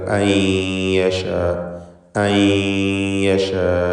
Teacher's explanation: അൻ യശാ എന്ന രണ്ടാമത്തെ ദീർഘം നേരത്തെ സൂചിപ്പിച്ച മദ് മുത്തസിൽ വാജിബ് തന്നെ, നിർബന്ധമായും 4-5 ഹറക്കത്തിൻ്റെ അളവിൽ ദീർഘിപ്പിക്കുക. അൻ എന്ന സാക്കിനത്തായ നൂനിനെ ഇദ്ഗാം ബി ഗുന്ന നാഖിസ് നൽകി യായിലേക്ക് ലയിപ്പിച്ച് മണിച്ചുകൊണ്ട് ഉച്ചരിക്കുക.